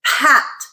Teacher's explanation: instead of the pure P sound we're adding that additional force that aspiration